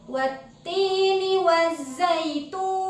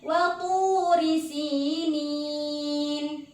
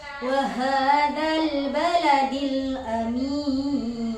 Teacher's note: Yang pertama nada tinggi, yang kedua nada datar, dan yang ketiga nada rendah.